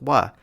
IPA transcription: w